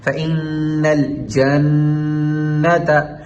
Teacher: نون کے اوپر تشدید ہے تو ہم نے ایک الف کے برابر ناک میں آواز ٹھہرا کے، مکمل آواز ٹھہرا کے غنہ کرنا ہے